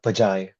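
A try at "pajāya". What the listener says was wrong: How did you pronounce that very last vowel sound? Jaya. Okay, because the first time you pronounced it, it sounded very singular-like with a very short at the end.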